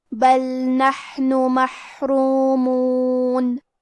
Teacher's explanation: کلمت بل میں لام ساکن ہے تو ہم حرف اللام کو ظاہر کریں گے